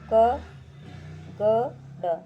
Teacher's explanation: पहली, तीसरी और पांचवी हमारी हो जाएगी अल्प प्राण में, जिसमें बोलते टाइम हवा जो है ज़्यादा नहीं निकलती है